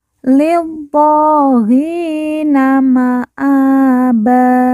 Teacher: di atasnya terdapat Alif kecil Lina maaba kemudian ban di ujung karena wakaf atau berhenti maka ban berubah menjadi ba